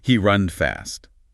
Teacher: repeats what you said, mistake included, but with a questioning tone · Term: rising intonation